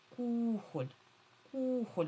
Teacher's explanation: Кухоль ми кажемо. Отже, наголошений перший склад. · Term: наголос